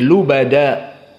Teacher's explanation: lubada di sini tanwin asalnya lubadan namun di saat diwakafkan tanwinnya berubah menjadi Mad jadi lubada di sini dinamakan dengan mad iwad dan dia harakatan